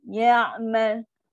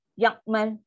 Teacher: Huruf ain tak boleh sebut dengan cepat. Dia kena slow motion kat situ sebab dia sifat tawasud.